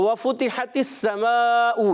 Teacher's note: تو وَفُتِحَتِ السَّمَاءُ، یہاں پر واو کی ادائیگی ہونٹوں کی گولائی سے، فا پر پیش ہے، فا پر بھی ہونٹ گول ہو جائیں گے